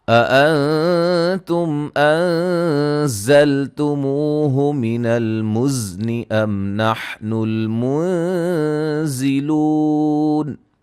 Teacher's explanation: نون ساکن کا اخفا، میم ساکن کا اظہار، یہاں نون ساکن کا اخفا ہے، زا کو سیٹی سے، موہ مدہ ہے، زا کو سیٹی سے ادا کریں گے، میم ساکن کا اظہار، زا کو سیٹی سے ادا کریں گے، لو مدہ ہے.